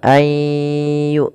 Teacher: Ayyu sambil dimasukkan ke rongga hidung karena dia ada bacaan idgham bi gunnah. Idgham artinya memasukkan, bi gunnah disertai dengan gunnah. · Suara nunnya kita masukkan kepada huruf ya dan kita tahan suara huruf ya-nya. Pertamanya begitu.